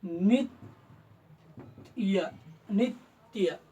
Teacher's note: पहा नित्य नित्य म्हणजे नित्य य त चा आघात हा जोडक्षराचा समोरील जोडाक्षराचा आघात ह्या नी वरती आलेला आहे